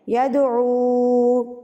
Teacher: 3 حرکات یعنی کہ 3 بند انگلیاں آپ کو کھولنے میں جتنا ٹائم لگے گا اتنا ٹائم آپ نے او کو کھینچ کے پڑھنا ہے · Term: چھوٹی مد